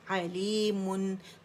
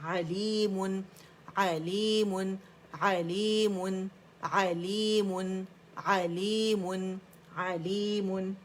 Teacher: दोनों होंठों को पकड़ के मुन करना है हमने